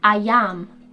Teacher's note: the linking sound y naturally forms between them so it kind of sounds like ayam I